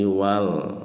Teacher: Alif lam qamariyah jelas lamnya disukunkan.